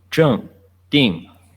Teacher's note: it's the falling tone